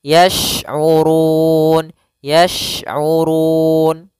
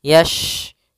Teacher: shin makhrajnya adalah tengah lidah kita. Yash, kemudian urun. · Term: huruf shin